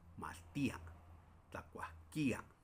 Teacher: Entonces, en mi caso, yo solamente lo pronuncio como eh aguda y en otros en otros municipios de la Aguasteca agregan una a y la i es ahí donde está el acento